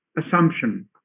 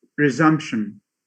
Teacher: this could be an example of epenthesis, adding a voiceless, a voiceless bilabial stop. It occurs in all words that have UME at the end.